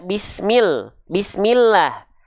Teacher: Ketika teman-teman mendapati ada lafaz Allah, ya, dan diikuti oleh bunyi vokal I sebelumnya, maka lafaz Allah itu dibaca dengan tipis